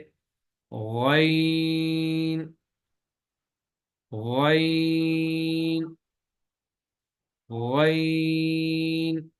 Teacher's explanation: गैन की अदायगी में जुबान की जड़ को तालू की तरफ बुलंद करेंगे सिर्फ, बाकी जुबान जो है उसको बुलंद नहीं करेंगे। जैसे गैन, गैन, गैन।